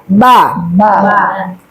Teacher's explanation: Kemudian ba itu perut bibir bagian dalam ya Bu ya.